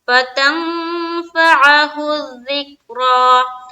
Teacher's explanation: تنگ میں اخفا کر رہے ہیں، کیوں؟ کیونکہ نون ساکن کے بعد فا ہے